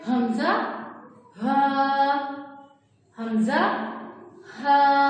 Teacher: یہ جو حلق ہے اس کے لاسٹ والے حصے سے ادا ہوگا، اور جب یہ ادا ہوگا تو تھوڑی سی وائبریشن آتی ہے، میں نے آپ کو بتایا کہ سینے میں تھوڑی سی وائبریشن ہوتی ہے۔ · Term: حروف حلقی